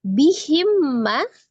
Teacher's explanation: mim sukun ketemu dengan huruf mim, idgham mimi ya. Diidghamkan sertai dengan gunnah.